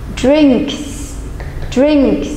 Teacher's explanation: Đối với những động từ kết thúc bằng âm vô thanh thì chúng ta sẽ phát âm là đuôi S, chúng ta sẽ phát âm là S.